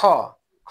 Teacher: খয়ে কিন্তু বেশি বের হয়, তাহলে খ হবে মহাপ্রাণ।